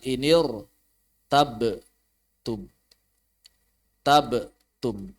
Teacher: ro yang berada setelah Hamzah wasal selalu dibaca tebal